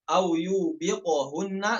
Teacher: Ya, kita perhatikan pada qalqalah pada huruf qaf